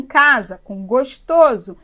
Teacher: o s no meio de duas vogais tem som de z